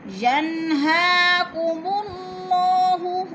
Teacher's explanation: ینہا نون ساکن اور حروف حلقی میں سے حمزہ آ گیا ہے تو ادھر اظہار ہو رہا ہے، اظہار حلقی یعنی غنہ نہیں کریں گے، لفظ کو ظاہر کر کے پڑھیں گے